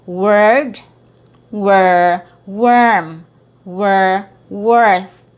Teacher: So again it's a very heavy r sound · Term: schwa plus R